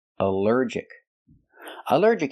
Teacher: Here the al is not pronounced all but pronounced uh like in cup and up because it's not stressed.